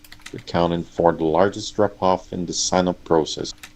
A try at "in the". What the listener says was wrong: again the TH versus D here.